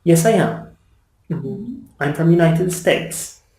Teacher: a normal statement I my voice goes down yes I am I'm from the United States my voice goes down at the end of the sentence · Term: intonation